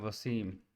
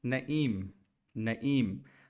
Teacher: वसीम में देखें लास्ट में एम पर आपके होंठ गोल हो रहे हैं